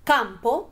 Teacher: Campo es una palabra bisílaba, tiene 2 golpes de voz y la sílaba tónica recae en cam. Po, por lo contrario, es sílaba átona.